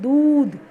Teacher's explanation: देखो अभी द में दीर्घ ऊ की मात्रा है, दूध तो नहीं बोल रहे हैं, दूध तो नहीं बोलते हैं, बोलते हैं दूध, मतलब दू पे हमने दबाव डाला, तो ये दूध जो है वो हो जाएगा दीर्घ ऊ की मात्रा का शब्द